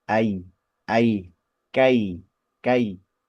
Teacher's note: lunak yang lembut ya bacaan yang lunak yang lembut gitu ya transisi atau peralihan dari dua vokal itu memang ee di jangkau dengan sempurna dua-duanya dan juga berurutan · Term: diftong